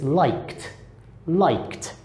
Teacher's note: we got liked, because that K has a K sound, which is unvoiced